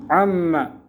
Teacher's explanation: اس نون کو میم بنایا تو میم کو میم نے ادغام کیا، عما ہو گیا، تو میم علی زبر ما تھا، تخفیفاً اس میم کے بعد الف کو حذف کیا ہے ہلکا کرنے کے لیے۔